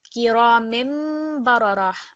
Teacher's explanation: this tanveen sound is going to change into a meme sound. So kiramim bararah, and we're going to pause.